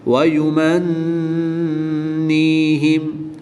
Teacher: نون مشدد میں ہمیشہ غنہ ہوتا ہے تو یہاں پر ہم غنہ کر کے پڑھیں گے۔